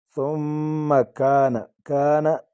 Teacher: الف مدہ الف خالی آگے زبر ہے، ایک الف کی مقدار اس کو کھینچیں گے